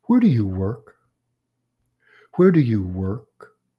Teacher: that's a 5w and an H so it's going to have a falling intonation · Falling intonation, lowering the pitch, letting up the stress.